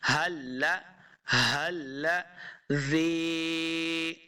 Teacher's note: زال کو نرمی کے ساتھ پڑھیں گے، زا پہ سختی نہیں کریں گے، اگر سختی کریں گے تو یہ زا بن جائے گا، زا بنے گا تو یہ ہماری غلطی ہو جائے گی۔